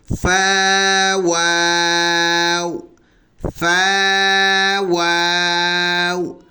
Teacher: فا نیچے ہونٹ کے سے جو اوپر کے دانت لگے، اس کے سرے لگے تو اس سے فا ادا ہوگا، اور دونوں ہونٹ کے گول ہونے سے واو ادا ہوتا ہے، اس طرح بن جائے گا فا واو، فا واو۔